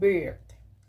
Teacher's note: es una vocal entre medio abierta y medio cerrada central que se emite sin redondear los labios